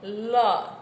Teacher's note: એ દંત્ય પાર્શ્વિક છે. એના ઉચ્ચારણમાં જીભનું ટેરવું ઉપલા દાંતને અને જીભનો આગળના ભાગ પેઢાને સ્પર્શે છે, અને હવા જીભની બે બાજુ ઘસાઈને નીકળે છે.